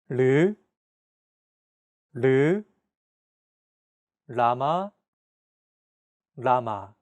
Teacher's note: This sound is actually somewhere between an L and an R sound. When pronouncing this sound, your tongue should strike the gum ridge behind your upper teeth in a quick, rapid motion. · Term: 리을